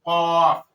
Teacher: جڑ زبان جب کوے کے قریب سے نرم تالو سے لگتا ہے تو قاف ادا ہوتا ہے، قاف، کیونکہ اس کو موٹا کر کے پڑھنا ہے کیونکہ یہ حروف مستعلیہ میں شامل ہے